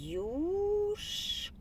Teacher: літера ю позначає не один а два звуки звукосполучення й у в якому й приголосний завжди м'який А у голосний